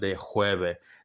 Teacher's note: That little extra constriction you do when you make the H sound, that is the hard H.